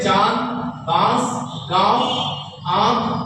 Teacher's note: तो जैसे चांद, बांस, गांव, आंख, हंस, चिड़िया, नाक, अंगूठा, यानी इनको बोलने पर हमारे मुख और नासिका दोनों से वायु निकलती है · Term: अनुनासिक